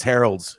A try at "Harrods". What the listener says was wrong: There's no L in it.